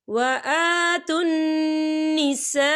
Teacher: ये देखिए, व आतुन निसा, खालिफ से पहले ज़बर है और इस पर मद भी है, और ये मद जो है मद मुत्तसिल है, इसकी मिकदार 4 हरकत के बराबर है, तो हम इसे 4 हरकत के बराबर खींच के पढ़ेंगे